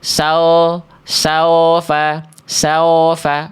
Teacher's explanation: kalau wau sukun teman-teman tak sempurna makhrajnya ya monyongnya cuman monyong-monyong yang enggak dimaksimalkan jadinya gitu. Sao sao faofa bentuk vokal u saufa bukan saofa saufa ya.